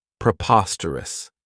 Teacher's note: This adjective has four syllables, and the stress is on that second syllable, preposterous. Remember that OS has that schwa, that sound.